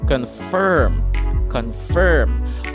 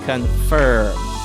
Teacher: So to pronounce the term properly or with a neutral accent without the need to stretch your face, you simply have to pronounce the I sound as a U sound, or as an elongated U sound. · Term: schwa